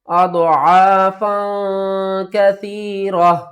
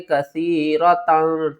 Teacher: اضعافا کثیرہ، زیادہ تر لوگوں کو اس کے بارے میں نہیں پتا یہ تا ہے یا ہا ہے۔ وقف کی صورت میں ہم ہا کو پڑھیں گے اور وصل کی صورت میں ہم تا کو پڑھیں گے۔